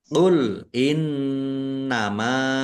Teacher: nun tasdid dibaca gunnah atau mendengung, ditahan biar tampak mendengungnya. Mim fathah alif mat tabi'i panjang 2 harokat.